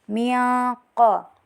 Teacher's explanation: Di sini terdapat hukum bacaan ikhfa hakiki. Karena nun sukun bertemu dengan salah satu dari 15 huruf ikhfa yaitu qo. Jadi baca samar